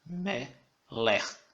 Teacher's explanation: E ocasionalmente algumas palavras recebem a ênfase na penúltima sílaba, como por exemplo a palavra meler. A ênfase dessa palavra meler está no me, a penúltima sílaba